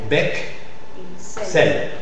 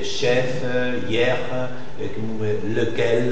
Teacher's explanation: le E suivi des consonnes dans la même syllabe, c'est E ouvert